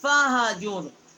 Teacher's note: فا کا مخرج ہے نیچے کے ہونٹ کا شکم، ہا ہے آگے، فَاہْجُرْ بڑی ہا ہے، اقصائی حلق سے اس کا مخرج ہے